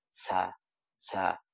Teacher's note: ঝাটা হচ্ছে জিহ্বার আগা সামনের নিচের দাঁতের সাথে লাগবে।